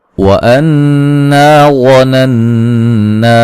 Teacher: नून मुशद्दद पे गुन्ना ज़रूरी है, अलिफ मद्दा है।